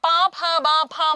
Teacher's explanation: ഇനി ചുണ്ടിന്റെ, അല്ലെ, പാ, ഭ, ബ, ഭ, മ എന്ന് പറഞ്ഞു നോക്കൂ, എല്ലായിടത്തും ചുണ്ടിനൊരു തടസ്സം വരുന്നുണ്ട് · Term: ഓഷ്ഠ്യാക്ഷരങ്ങൾ